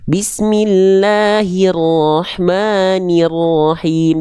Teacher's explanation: Kalau masih kedengeran e, nggak jelas vokal i-nya, tandanya kurang diangkat bagian tengah lidah kita.